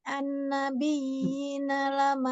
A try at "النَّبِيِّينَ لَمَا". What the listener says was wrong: Ulang, ulang, ulang. Nun tasdidnya jadi kurang dengungnya.